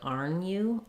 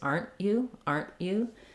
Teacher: when I'm making that stop T my tongue goes up to the T position but it doesn't release that means that the um is going to be very short